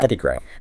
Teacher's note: The first O is stressed